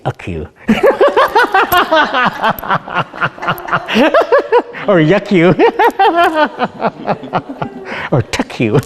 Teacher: In Lushootseed, they don't have an F sound. So when we cuss, we don't say, we don't use the F word.